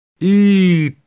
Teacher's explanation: You really say it slow. You start high and you go low in the sound.